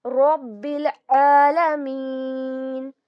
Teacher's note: عالمین میں جو لام ہے، الف جو ہے وہ پڑھا نہیں جائے گا کیونکہ ہم اس کو ملا کر ہی پڑھیں گے